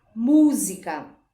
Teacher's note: a sílaba tônica é a antepenúltima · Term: proparoxítona